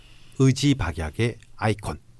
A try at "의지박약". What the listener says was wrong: 야, 너 의 발음 안 되니? 의지박약.